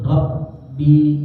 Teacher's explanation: Rabbi, ra dari ujung lidah, ya. Kemudian ke ba itu dari kedua bibir. Jadi dari ra ke ba ya balem.